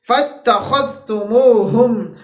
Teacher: اب یہاں پہ یہ خا کی ایگزامپل ہے ہمارے پاس، فَاتَّخَذْتُمُوهُمْ، اس کے بعد ہمارے پاس ہا آ رہا ہے، سب سے پہلے ادنا حلق، پھر اقصا حلق، پھر ادنا حلق۔ ٹھیک ہے جی، ادنا حلق، اقصا حلق، پھر ہمارے پاس لاسٹ میں ادنا حلق۔